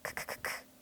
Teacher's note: 이 글자의 소리도 비슷해요. 크크크크 할 때처럼 혀의 뒷부분을 입천장 뒤쪽의 연한 부분에 댔다가 떼며 크 하고 소리내야 하는데요.